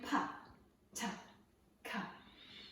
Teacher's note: the pa happens at the front of our mouth, the ta is in the middle, and the k is in the back